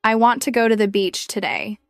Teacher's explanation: The small words like to, the, and today are less stressed.